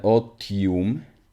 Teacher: we begin with a glottal stop and then an o and then a t